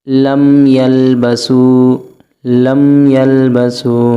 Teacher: میم ساکن کے بعد یا آ رہا ہے، غنہ نہیں ہوگا۔ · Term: اظہار شفوی